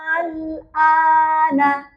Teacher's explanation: Tapi bacanya dipanjangkan dulu a-nya. Setelah panjang 6 harokat, baru lanjut. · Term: mad lazim mukhaffaf kilmi